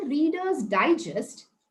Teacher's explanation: When I say Reader's Digest, I stress upon the I. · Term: syllable stress